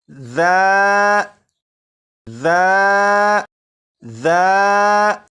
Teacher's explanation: زبان کی نوک اوپر کے سامنے کے 2 دانتوں کے سرے سے لگا کر پڑھیں تو سی ٹی کی آواز ختم ہو جائے گی